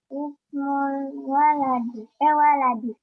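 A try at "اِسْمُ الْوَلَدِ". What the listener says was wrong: Ya, ismul. Ya, betul. Ismul waladi. Ya, bagus. Mantap.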